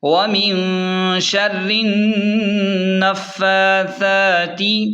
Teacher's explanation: نون فا زبر نف، فا کھڑا زبر فا، ثا کھڑا زبر ثا. فا اور ثا دونوں کو کھڑا زبر کی وجہ سے کھینچیں، ثا کو بالکل نرم پڑھیں